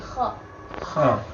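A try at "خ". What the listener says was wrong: Itu kha-nya terlalu dalam. Enggak, kha. Udah dekat ke huruf ain.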